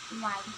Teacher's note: when we pronounce why, our tongue raises to the top of our mouth, but it's not too close. Jadi di sini ketika kita mengatakan why, lidah kita hampir berdekatan dengan langit mulut, tapi itu tidak terlalu dekat, tidak sampai bersentuhan gitu. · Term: approximant